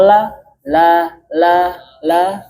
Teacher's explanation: lam yaitu tempat keluar adalah tepi kanan kiri lidah bagian depan.